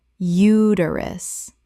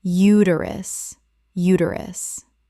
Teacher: The stress is on the first syllable and the middle syllable is reduced.